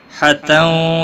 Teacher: تنوین کے بعد حروف یرملون کا واو ہے، ادغام با گنہ ہوگا